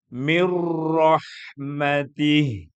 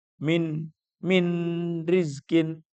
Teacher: Ingat tidak ada nun tapi langsung masuk ro